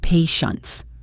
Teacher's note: Notice that the final T is often very soft or unpronounced, especially in American English.